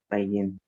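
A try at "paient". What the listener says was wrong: No, la NT nunca suena. Pay, nada más. El pay, el pay.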